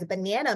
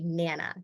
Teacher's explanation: unstressed syllable deletion and a child instead of pronouncing the word as a banana may say nana so they drop that first